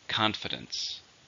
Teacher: How many syllables are in confidence? 3. Stresses on the first syllable. Confidence.